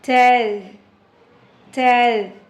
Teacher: ज़ुबान को हम ऊपर वाले दांतों के किनारों से लगाते हुए हल्का सा बाहर प्रोट्रूड कर लेंगे। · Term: ज़ाल